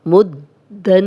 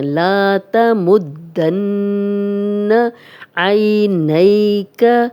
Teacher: نون پہ شد آ گئی ہے تو یہاں ہم غنہ کر رہے ہیں، غنہ ناک میں تھوڑی دیر آواز کے ٹھہرانے کو کہتے ہیں۔